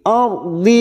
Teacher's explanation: Wal ardi. Ra sukun yang didahului fathah kita baca tafkim.